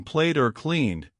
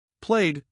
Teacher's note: After a voiced sound, like in played or cleaned, the ed is pronounced like a simple D sound